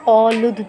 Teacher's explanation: دال پہ قلقلہ کریں گے